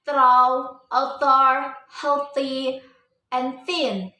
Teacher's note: Pronunciation is symbol theta. It is called a voiceless dental fricative. The pronunciation the place in the tongue and teeth, and it is a fricative.